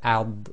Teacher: So the if you try and say and then say al so again it's thick letters so the back of the tongue will come up a bit